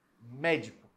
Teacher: médico última é o có o de é a penúltima e o mé é anti-penúltima é a mais forte é uma proparoxítona